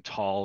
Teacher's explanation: In tall, it's aspirated, so there's a little puff of air that comes out.